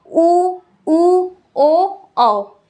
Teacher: जो होठ होता है वो पूरी तरीके से गोल हो जाता है बोलने पे ना, देखिए उ, ओ, औ एक ही स्थिति पे है। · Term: वृत्तमुखी स्वर